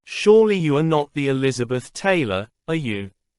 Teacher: The can emphasize uniqueness. It is heavily stressed in speech.